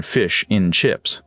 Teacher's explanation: And the word and almost disappears into just an N sound